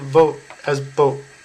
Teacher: there is no true V sound in Japanese so L1 speakers tend to substitute the letter B